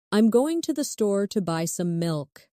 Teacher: Notice how certain words are stressed. Going, store, buy, milk.